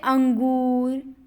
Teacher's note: अनुस्वार का उच्चारण केवल नाक से होता है · उसमें नाक का ज़्यादा प्रयोग है, मुंह बिल्कुल नहीं है।